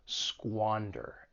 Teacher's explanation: the verb has two syllables. The stress is on that first syllable, squander. And keep in mind that S-Q-U-A has that squaw sound, to squander something.